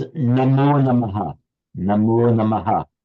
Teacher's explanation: the visarga, the aha visarga, becomes o before a following voiced consonant